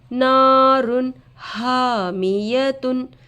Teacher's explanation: تنوین کے بعد حروف حلقی میں سے ہا آ کر ہے نون کے آواز کو ظاہر کر کے بغیر غنہ کے جلد پڑھیں گے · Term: اظہار